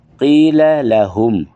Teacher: ہم یہ آخر حلق سے سینے سے نکالنا ہے ہا کو